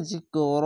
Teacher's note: জিকরণ না বলে জিকর এক আলিফ টেনে থেমে যাবে